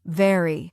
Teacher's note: V uses the teeth and lower lip